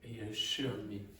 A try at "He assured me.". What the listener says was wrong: No, now do you hear any D at the end of that word?